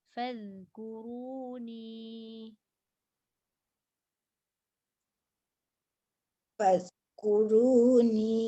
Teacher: Zal keluarkan dekat tengah gigi dan jangan bunyi z tu.